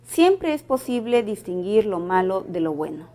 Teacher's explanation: el tono es descendente y podríamos sí cambiar a una pregunta